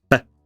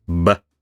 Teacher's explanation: So an unvoiced labial stop is p. A voiced one is b.